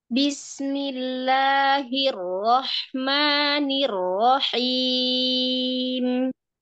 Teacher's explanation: ada getaran di bagian lidahnya kita ketika mengucap arro. Jadi berikan sedikit getarannya, sedikit aja, jangan berlebihan.